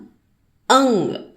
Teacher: అంగ్ అంటే గ న మిక్స్డ్ సౌండ్ వస్తుంది అ తర్వాత